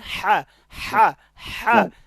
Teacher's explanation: হাটা গলার মাঝখান থেকে, হলকের মধ্যখান হইতে